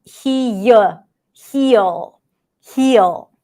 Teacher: And lateral, this because the air is coming out through the side. The air and sound are coming out through the sides, and there is a block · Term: lateral consonant